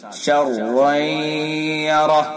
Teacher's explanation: را کو پر کر کے پڑھیں گے